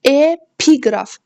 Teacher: Epiqraf, ikinci hecəyə düşür, i saatinin üzərinə düşür. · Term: vurğu